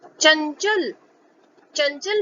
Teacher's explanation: चंचल, चंचल में भी अंग की बिंदी यानी अनुस्वार के बाद च वर्ग का पहला वर्ण च लिखा है, इसीलिए इसमें च वर्ग के पंचम वर्ण की ध्वनि का उच्चारण हो रहा है